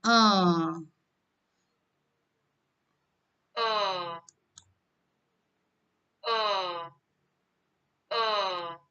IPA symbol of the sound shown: ʊ